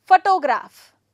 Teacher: For example, photograph, stress the first syllable